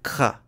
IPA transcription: kx